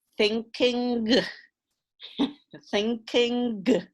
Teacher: you get a little g on the end